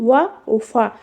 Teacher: इनमें दांत और ओठ दोनों का यूज हो रहा है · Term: दंतोर ओठ